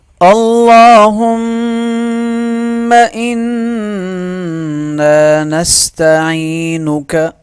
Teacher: لام پہ تشدید ہے، لام موٹا پڑھا جائے گا، ایک الف کے برابر کھینچ کے پڑھا جائے گا، میم پہ غنہ کیا جائے گا، نون پہ غنہ اور ایک الف کے برابر اسے کھینچ کے پڑھا جائے گا۔